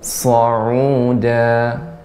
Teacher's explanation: Sa tajam namun tebal